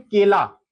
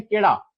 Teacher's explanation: कुछ क्षेत्रों में केला को केला नहीं बोलते, बोलते हैं केड़ा